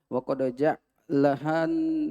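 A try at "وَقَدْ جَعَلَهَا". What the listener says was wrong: Salah harokat itu berarti. Ja'alaha.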